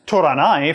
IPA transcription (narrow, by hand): toɾanai